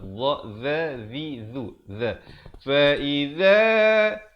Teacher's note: Fa'iza zal, sama seperti huruf dha tadi, zal, hujung lidah mesti keluar